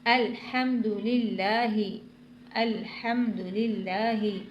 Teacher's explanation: لام کو باریک پڑھنا ہے کیونکہ لام سے پہلے زیر آ رہا ہے، اور جب لام سے پہلے زیر آتا ہے تو لام باریک ہو جاتا ہے۔